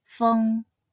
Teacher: Its pinyin is spelled feng, and should be read in the first tone